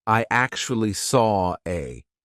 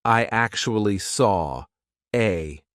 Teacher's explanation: the intrusive R is when we insert an R to link to the next word. Even though there's not an R written there, we just put one in.